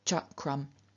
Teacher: reduplicated as the unvoiced, unaspirated palatal, which is ch